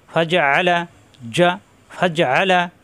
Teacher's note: আইনে সাব দিতে হবে কন্ঠনালীর মাঝখানে কন্ঠনালীর মাঝখানে সাব দিতে হবে ফাজা আলা জা ফাজা আলা হাফ